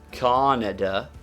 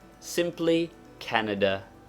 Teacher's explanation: there is a slight stress upon the first syllable but not enough to make it a long vowel